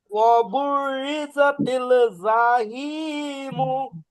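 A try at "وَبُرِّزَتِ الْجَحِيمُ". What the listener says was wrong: মাশাআল্লাহ, শুধু জিমটা একটু শক্ত করেন। হ্যাঁ ওয়াবুররিজাতিল জাহিমু।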